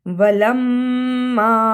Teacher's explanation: وَلَمَّا میں مشدد ادا کیا، الف مدہ کو بھی ادا کیا